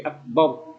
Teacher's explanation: ra sukunnya itu harus dibaca tafkhim, dibaca tebal karena sebelumnya ada huruf berharokat fathah. Tidak boleh dibaca bar, tapi akbar.